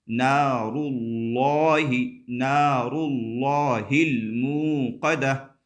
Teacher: نار اللہ، نار اللہ، لفظ اللہ کے لام سے پہلے پیش آ رہا ہے، یہ بھی ہم پڑھ چکے ہیں کہ لفظ اللہ کے لام سے پہلے زبر یا پیش آئے تو لفظ اللہ کا لام پر ہوتا ہے، یعنی موٹا کر کے پڑھیں گے